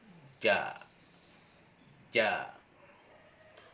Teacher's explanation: Tengah lidah lalu menyentuh langit-langit atas. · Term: huruf ja